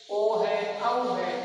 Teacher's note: इनका उच्चारण स्थान कंठ और होठ इनसे आती है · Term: कंठोष्ठ